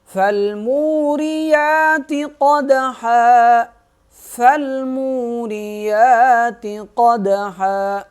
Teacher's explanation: قاف کو موٹا کریں گے، دال پہ قلقلہ کریں گے، آواز کو ہلائیں گے